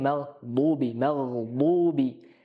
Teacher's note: ketika diucapkan pangkal lidah Tengah naik ya Sehingga terdengarnya tebal